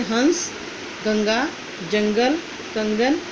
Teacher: अंग इसे अनुस्वार कहते हैं। इसका उच्चारण नाक से होता है।